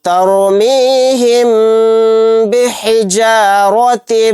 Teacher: تَرْمِيهِمْ، یہاں پر اس رائے ساکنہ کو بھی موٹا یعنی پر پڑھیں گے، یہاں پر میم ساکن کے بعد با آ گیا تو یہاں پر بھی ہم غنہ کر کے پڑھیں گے